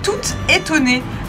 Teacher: Le mot étonné commence par une voyelle, tout étonné s'écrit donc T-O-U-T, mais on prononce quand même toute, puisque le mot suivant commence par une voyelle.